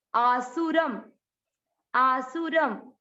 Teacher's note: र और र पे यहां पर लग गया अनुस्वार, ये अनुस्वार है आधा म, क्योंकि ये शब्द के लास्ट अक्षर पर है, इसलिए इसको पढ़ेंगे आधा म।